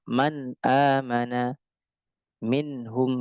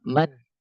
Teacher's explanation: Man masih ada gunanya, man, tapi sedikit sekali, naqis, kurang. Man amana. Ya, man amana. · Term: gunnah yang kurang